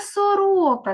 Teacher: Сорока три Склади і другий склад наголошений